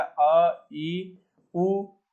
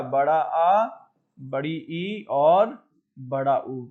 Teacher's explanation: ह्रस्व यानी जिनके उच्चारण में एक मात्रा का समय लगे, और दीर्घ में जिनके उच्चारण में दो मात्रा का समय लगे, दो बार लगे।